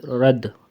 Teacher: را کو موٹا پڑھیں گے کیونکہ اس کے اوپر زبر ہے